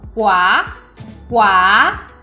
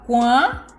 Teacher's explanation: É muito importante distinguir o som oral, quá, quá, do nasal, quá, e marcar essa pausa glotal